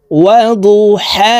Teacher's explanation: এই হা কে হলকের মধ্যখান থেকে উচ্চারণ করে পড়তে হবে কারণ এটি বড় হা হলকের মধ্যখান থেকে উচ্চারণ হবে এটির মাখরাজ